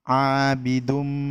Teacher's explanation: Pada bacaan abidumma, karena domah tanwin bertemu dengan mim. Hukum bacaannya yaitu dengan dileburkan dengan mendengung. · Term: idgham bigunnah